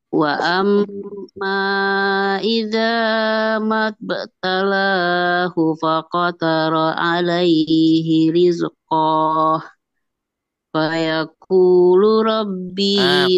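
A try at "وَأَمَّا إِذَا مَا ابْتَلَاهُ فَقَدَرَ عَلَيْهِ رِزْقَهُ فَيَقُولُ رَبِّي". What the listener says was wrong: Ko-nya nggak panjang, Bu.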